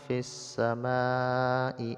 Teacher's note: samai mad asli bertemu dengan Hamzah dalam satu kalimat disebut mad wajib muttasil panjangnya lima harak